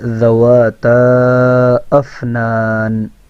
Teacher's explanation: فا کے اندر اوپر والے دانتوں کو نیچے والے ہونٹوں کے اندرونی حصے پہ لگانا ہے، اور نون جب ساکن ہو تو نون کی آواز کا آنا ضروری ہے۔